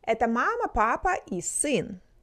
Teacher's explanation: When listing items, we have a slight rise on each item except the last one.